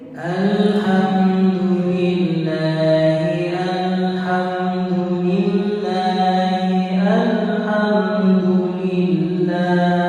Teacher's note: Kedengarannya masih dolil dibaca dulil ya, du bukan do, li bukan le